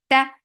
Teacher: For fatha open jaws the sound is short. Ta very sharp sound. There is no flow of sound here.